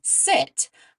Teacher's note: When we make the s sound, like in sit, our tongue creates a narrow opening for the air to just sort of flow through, and we don't turn our voice on.